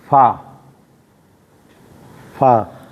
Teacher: ऊपर के दो दांत दांतों के अंदरूनी किनारे और नीचे होठों के तर हिस्से से अदा होता है